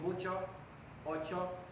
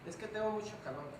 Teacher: perdemos el momento oclusivo que tiene Che un momento de cierre que tiene Che como si fuera una t